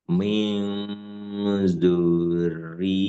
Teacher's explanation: nun sukun bertemu zal atau tanwin bertemu zal dibaca dengung dan samar